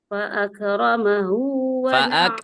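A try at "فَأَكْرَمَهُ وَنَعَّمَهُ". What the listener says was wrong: jangan mantul, jangan fa'akramahu.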